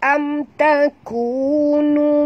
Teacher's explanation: Ada tanda panjang ni. Mim mati bertemu ta, tak boleh dengung. Ya, saya telah jelaskan apabila jumpa saja mim mati, maknanya dia berjumpa dengan huruf yang tak boleh dengung, ya, iaitulah izhar syafawi.